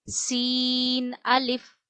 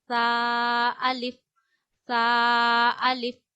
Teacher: सीन में सीटी आती है ता में सिटी नहीं आती है